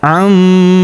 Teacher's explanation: Huruf ma kita tahan dan tekan karena terdapat tanda tasydid di atasnya, serta kita dengungkan ya 2-3 harokat.